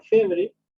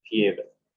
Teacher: La e tónica abierta también se convierte en ie. Bueno, antes decían febre, ya pasado al español es fiebre.